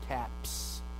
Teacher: you have two points of articulation you have the bilabial pa right and then we have the s alveolar and you can put those two points of articulation together and